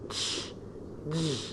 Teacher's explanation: This is a combination of two sounds, as you see, which starts with a complete closure, then it is followed by a slow release of air with friction. Okay? This includes the alveopalatal sounds, ch, j.